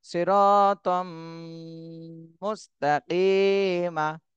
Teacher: তানবিনের পরে ইদগামে বা গুনার হরফ আসবে এজন্য গুন্নাস সহ মিলাতে হবে